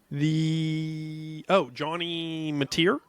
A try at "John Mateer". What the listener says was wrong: John Mateer. No, it's not Johnny. Yeah, it's just John Mateer.